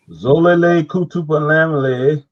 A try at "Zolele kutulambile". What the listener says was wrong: Lambile. You have a long vowel. Remember, the N is there for your nasal. You don't read it.